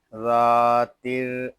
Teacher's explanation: را مشدد ہے، اس میں تھوڑا سا تکرار کریں گے۔